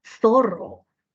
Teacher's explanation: No utilizamos la lengua entre los dientes, sino utilizamos la S. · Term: ceseo